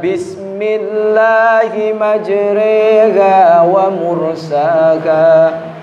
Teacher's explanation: Nama hukumnya imalah. Imalah itu memiringkan bunyi bacaan fathah dari ro menjadi re.